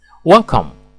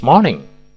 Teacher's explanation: Welcome dan morning dilafalkan dengan nada naik untuk menunjukkan sambutan yang hangat dan serius.